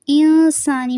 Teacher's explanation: انسانی میں اخفا ہو رہا ہے، نون کی جو زیر ہے اس کو لمبا نہیں کرنا.